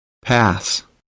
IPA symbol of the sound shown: æ